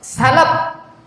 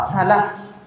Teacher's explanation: gigi seri bagian atas bertemu dengan bibir bagian bawah